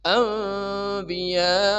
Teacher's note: bertemu hamzah di satu kata dibaca empat harakat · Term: mad wajib